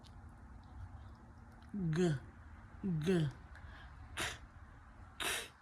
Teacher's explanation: K, glottal stop, k, k, and then the G, g, g, g. They're made by bringing the back of the tongue to the soft palate. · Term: stop consonants